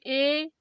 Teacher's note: ए कितना थोड़ा ही तो खुला है ना, द्वार क्या सकरा खुलता है, कम खुलता है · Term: अर्ध समृद्ध